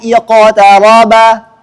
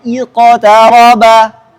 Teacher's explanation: Kita contohkan dua mazhab secara langsung, condong ke fathah dan condong ke kasrah. Kalau condong ke kasrah bunyinya iqtaraba.